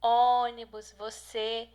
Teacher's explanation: o acento circunflexo que indica a vogal tônica possui um timbre mais fechado